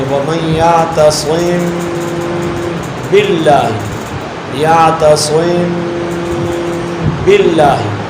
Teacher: میم کی ادائیگی میں ہونٹ نرمی سے ملا، غنہ ادا کیا، یعتصم، جب با کو ادا کریں گے تو ہونٹوں میں سختی پیدا کر لیں گے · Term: اخفاء شفوی